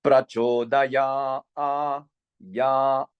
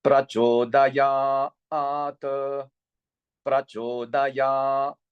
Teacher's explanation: this ya is also dirgham, meaning the long tone, and delayed upper tone. prachodayat, and then we are coming back with this T in the middle. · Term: Dirga Svarit